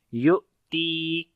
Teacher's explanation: یا کو حمزہ کے ساتھ ملائیں گے، جھٹکا دیں گے، کیونکہ جب حمزہ کے اوپر جزم آتی ہے وہاں جھٹکا دے کر پڑھتے ہیں، یعنی کہ اس وقت اس حمزہ کے اندر شدت آ جاتی ہے، آواز بند ہو جاتی ہے اور آواز کے اندر سختی آتی ہے